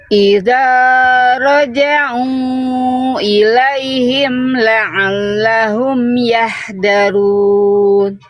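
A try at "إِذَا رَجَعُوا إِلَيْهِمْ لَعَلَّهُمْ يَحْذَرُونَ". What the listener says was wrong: Pokoknya huruf-huruf tebal Bunda masih kurang tebal karena pangkal lidahnya belum aktif. Contohnya di sini ro dhammah. Ro dhammah Bunda masih kurang tebal. Harusnya kan bukan cuman yahdaru tapi yahdaru tebal. Yahdaru tebal. Angkat pangkal lidahnya.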